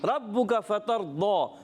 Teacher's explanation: ربک فترضی, را کو پر کر کے ادا کرنا ہے, با مشدد ذرا رک کر ادا کریں گے